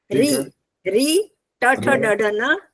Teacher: ये सब मूर्धा से होते हैं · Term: मूर्धन्य